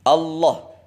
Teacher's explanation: Allah, jangan ditekuk lidahnya sama sekali. Allah, jadi hanya ditekan, ditempelkan di pangkal gigi-gigi seri yang atas